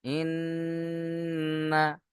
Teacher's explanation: নুনের উপরে তাসদিদ, অজীব গুন্না, তাই আমরা এখানে গুন্না করে পড়বো